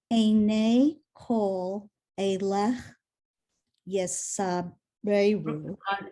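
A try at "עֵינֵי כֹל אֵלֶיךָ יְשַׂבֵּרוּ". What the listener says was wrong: You go back to the third word. You left off the final syllable. Einei chol elecha yisaberu ve'ata noten lahem et achlam be'ito.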